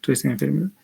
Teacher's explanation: Y lo que encontramos es eh una asimilación de las nasales acá, la nasal. Este sonido se ha labidentalizado porque le sigue un sonido labioidental.